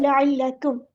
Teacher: उसकी हरकत के मुताबिक पढ़ना है, लअल्लकुम, काफ बारीक अदा होगा, मीम साकिन का टाइम नहीं लगाना, लअल्लकुम नहीं करना क्योंकि यहाँ पे इज़हार शफ़वी हो रहा है